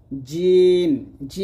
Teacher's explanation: জিম জিহ্বার মধ্যখান তার বরাবর উপরে তালুর সঙ্গে লাগবে জিম জিম উচ্চারণ করার সময় আপনার জিহ্বা যেন দাতে না লাগে